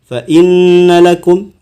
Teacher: ada mim tasydid nun tasydid maka harus dibaca dengung, ditahan selama 2,5 harakat